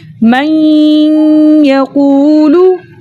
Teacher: پیش کو بغیر کھینچے، بغیر جھٹکا دیے متوسط اور معروف طریقے سے پڑھتے ہیں